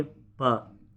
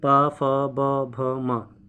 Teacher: पा बोलेंगे तो दोनों हॉट ऑलरेडी ऑटोमेटिकली मिल जाएंगे आपके। बोल के देखिए, अभी बोलिए, पा मिले तो ओठ, ओठों का प्रयोग हो रहा है, ओष्ठ से, सिंपल है। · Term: प वर्ग